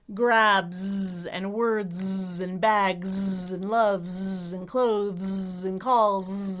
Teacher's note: When there's a final S on a word at the end of a verb or a plural, most of the time that S will be a Z sound, as in zebra, the voiced version, Z. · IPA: /z/